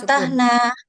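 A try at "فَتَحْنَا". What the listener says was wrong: Fatah, nah. Nanya pendek ya. Fatah. Nah.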